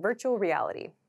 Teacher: at Native speed this sounds like virtual reality so these R and L sounds kind of connect